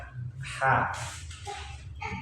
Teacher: Ha makhrajnya di tenggorokan bagian tengah